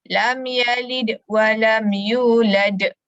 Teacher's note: Kubra sebab berhenti. Okey, jadi lantunan dia lebih besar. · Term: qalqalah kubra